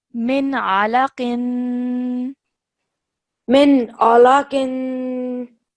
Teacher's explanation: this is a nun sakin, but the next letter is an ain, so we do not produce that 2-second nasal sound · the qaf has a tanween, so we do produce that 2-second nasal sound because no letter comes after it